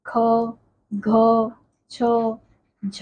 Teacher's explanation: उच्चारण में ह का ध्वनि सुनाई पड़ती है उन्हें महाप्राण कहते हैं